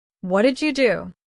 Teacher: Notice how did you turns into didya.